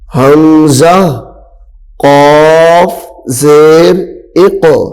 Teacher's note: یہاں پہ قاف حروف قلقلہ ہے تو قلقلہ کریں گے